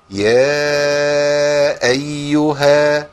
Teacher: الهمزة حرف شديد، نعم، مجهور، نعم، يعني مقطوع الصوت والنفس، نعم، لكن برضه لازم يخرج بلطف